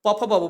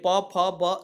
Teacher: दोनों ओंठ देखिए प फ ब दोनों स्पर्श हो रहा है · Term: स्पर्श व्यंजन